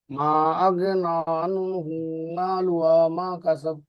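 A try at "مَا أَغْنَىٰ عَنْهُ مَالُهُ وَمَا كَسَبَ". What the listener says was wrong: এখানে এসে একটু লম্বা করতে হবে, মা আগনা আনহু মালুহু মালুহু মালুহু মালুহু হ্যাঁ মালুহু মালুহু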